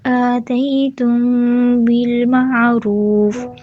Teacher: آتیتم تی یائلین ہے، تم میم ساکن کے بعد با اخفا شفوی